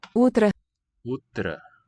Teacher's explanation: So this O also gets weakened. The accented syllable is that first one, утро.